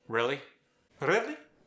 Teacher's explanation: the standard American R versus the strong roll of the Brazilian R